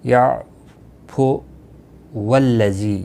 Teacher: یعفو والذی، یہ ہم الف جو ہے یہاں پر نہیں پڑھا جائے گا، اس کے اوپر آپ نشان دیکھ رہے ہیں، اس کو آپ نے نہیں پڑھنا ہے. والذی واو لام کے ساتھ ملے گا